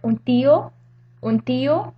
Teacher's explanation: it's a dental N because the letter that comes after it, the T, is dental